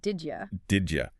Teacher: did you often links and reduces to something that sounds more like did ya